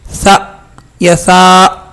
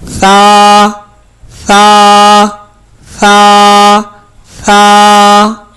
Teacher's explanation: ثا کے آخر میں الف بھی ہے، تو اس میں جھٹکا نہیں ہونا چاہیے،